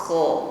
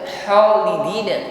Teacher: Huruf kha sifatnya isti'la, tebal bunyi hurufnya. Ada gesekan di dinding tenggorokan sehingga ada bunyi dengkur.